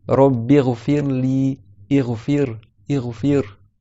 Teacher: quand le ra, il a une kasra, alors là, le ra, il a une caractéristique qu'on dit qu'il est muraqqaqa, c'est-à-dire qu'il est allégé. Par exemple, tu dis Rabbi ghfirli, ighfir.